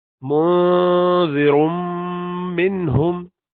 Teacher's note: This noon is sakina followed by ha, which is huruf halq. You do izhar. That's why you do not prolong this noon.